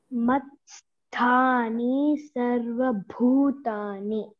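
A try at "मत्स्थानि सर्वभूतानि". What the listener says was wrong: See there, Matsthani is short vowel. N-I, okay, there is no bar upon I. That means it is short. Matsthani Sarva Bhutani.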